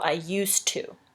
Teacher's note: we pronounce it with like a t at the end instead of a d · you don't even say the d at all